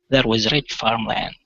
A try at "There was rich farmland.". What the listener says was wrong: Okay, watch your R's. There was rich farmland.